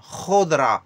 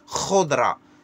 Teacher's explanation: Le R raclé au fond de la gorge comme vous dites le mot cracher